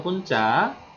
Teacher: 배가 있기 때문에 입술과 입술을 붙여 발음한다는 거